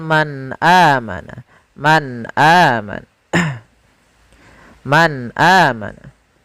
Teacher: suara nunnya harus jelas, tidak boleh ditahan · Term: izhar